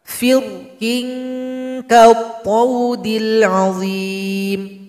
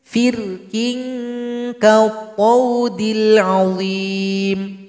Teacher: Ketika dibaca dengan tafkhim, dibaca tebal, maka bibir bawah ini agak sedikit naik ke atas karena pangkal lidah kita naik ke langit-langit.